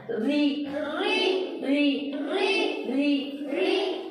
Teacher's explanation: मखरज में कोई तब्दीली नहीं होगी, कोई बदल नहीं होगा, सिर्फ रा को बारीक पढ़ना है।